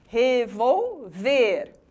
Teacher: Revolver, o verbo, palavra oxítona, tem como sílaba mais forte a última.